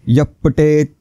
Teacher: पुढची ओळ विसर्ग आला, उभ्या बेट्याने खेळायचा आहे. विसर्गाच्या पुढे प आहे म्हणून हवा सोडल्यासारखा उच्चार, हवा सुटली पाहिजे ओठांमधून. यप्पटेत यहपटेत असं नाही, यप्पटेत.